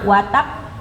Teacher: Kalau yang pertama watakb jeda dulu sebentar ya. Jeda dulu baru dipantulkan. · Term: qalqalah